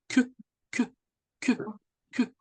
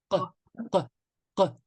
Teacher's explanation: Le qa, il se situe entre la gorge et le début du palais. À ne pas confondre avec kef, le K, hein, comme le K qu'on connaît en français, qui lui, le K en français, il est quand même pas guttural, mais buccal. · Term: qaf